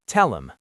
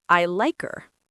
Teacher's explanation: In rapid speech, the H is often dropped if the pronoun isn't at the start of the sentence. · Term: elision